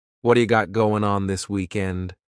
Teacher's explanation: the word what is going to change to a D sound this is really typical of American English where a t that's surrounded by vowel sounds is going to change to a d · surrounded by vowel sounds is going to change to a d it's called a flapped t and it just rolls off your tongue in a smooth way